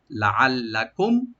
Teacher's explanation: কুম মিম সাকিন যেটা আছে এখানে আমরা এজাহার করবো, এখানে মিম থাকে, এখানে কোনো গুণা হবে না